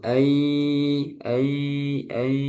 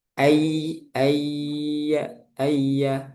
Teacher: ketika bertemu ya dan wau maka ee suaranya keluar dari hidung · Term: idgham naqis